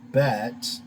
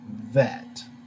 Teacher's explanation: the dagesh in the bait that changes the pronunciation from bet to vet so you get that v sound